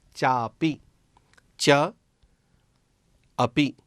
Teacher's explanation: च का अ और अपी का अ, ये अ और अ इन दोनों के मिलने से आ ऐसा परिवर्तन है इसमें। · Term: दीर्घ परिवर्तन